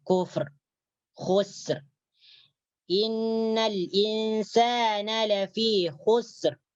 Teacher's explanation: Itu ra matinya dibaca tebal, dibaca tafkhim.